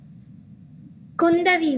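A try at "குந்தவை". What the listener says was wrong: It's not Kundavi, it's Kundavai. Okay. It's Kundavai. VAI, Kundavai.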